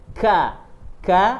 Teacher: Kemudian huruf kaf. Huruf kaf di mana pangkal lidah itu menyentuh langit-langit bagian yang keras.